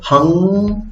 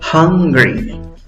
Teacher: La fuerza de voz va en la primera sílaba contando de izquierda a derecha. En la primera sílaba, aunque en la escritura va una U, en la pronunciación tenemos una schwa. Es la schwa, aquella vocal no es ni A, ni E, ni O.